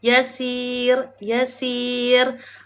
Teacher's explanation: Maka kita kena nipiskan bacaan ra dengan rendahkan rahang kita ataupun kita senyumlah rendahkan rahanglah.